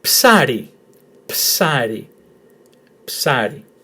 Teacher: Emphasis on the first syllable, on the letter A.